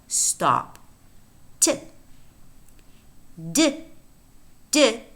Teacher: is a voiceless alveolar stop